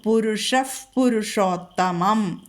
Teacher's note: അവിടെ വിസർഗം കഴിഞ്ഞിട്ട് പ വന്നാൽ ഫ വരും